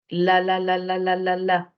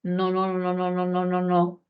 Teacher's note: inmediatamente después de los dientes superiores por la cara interior hay una curvita carnosa dura Esa es la zona alveolar